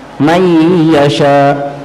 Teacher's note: betul nunnya kada dibaca lagi sudah karena masuk ke huruf ya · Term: idgham